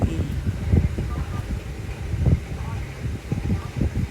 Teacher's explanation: बड़ी ई का उच्चारण स्थान है तालु